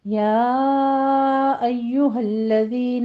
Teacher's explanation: یا پر مد منفصل جائز ہے، اس کو 4 کاؤنٹ کرنا ہے